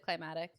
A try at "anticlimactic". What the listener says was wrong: but that's actually how I used to say it. It's climactic. Yeah, there's a C in there. Anti climactic. Climatic. Nope. Climactic. No, everyone says anaclimatic because they're like,